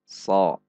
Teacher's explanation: So juga tidak dengan membulatkan bibir. So. Namun dengan menaikkan pangkal lidah. So. Dengan ujung lidah sama persis dengan huruf sin kecil. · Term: isti'la